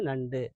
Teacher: சாதாரண நண்டுன்னு சொல்லும்போது நண்டு அப்படின்னு சொல்லும்போது உதடுகள் குவிவதில்லை